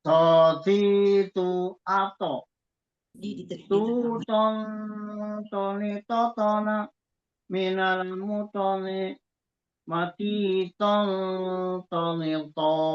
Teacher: Makhrajnya kan ada di apa namanya, satu makhraj dengan ta dan dal, ya. Ujung lidah bertemu dengan gusi belakang bagian atas, ya. Gusi gigi seri bagian atas. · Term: huruf to